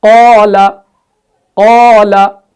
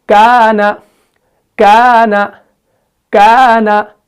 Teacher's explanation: तो कौफ जो है वो पुर पढ़ा ही जाता है, तो अलिफ भी उसके साथ पुर पढ़ा जाता है।